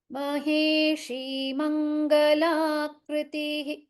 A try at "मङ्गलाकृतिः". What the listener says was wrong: So krutihi is wrong. Kritihi.